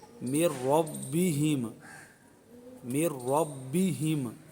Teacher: را کو پر پڑھیں گے، با پر قلقلہ کریں گے